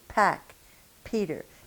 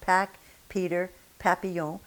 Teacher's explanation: Now say papillon with the same English mouth that you have been using, like pack, Peter, papillon, and see if you don't feel a big burst of air coming against your fingers when you say those P's. As you might have guessed, in French, this is not the case.